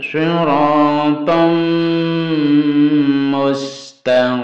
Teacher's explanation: Tanwin bertemu mim guna idgham bi guna. Didengungkan, dimasukkan ke mim dan didengungkan.